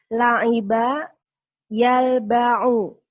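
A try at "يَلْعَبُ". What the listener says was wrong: Nah, kok jadi yalba'u? Kebalik-balik itu mah. Kok jadi yalba'u? Ba'nya jadi ke depan, aina belakang.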